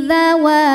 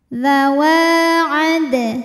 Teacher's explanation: Cara bacanya adalah wawunya ini panjang 2 harokat. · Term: mad tabi'i dhahiri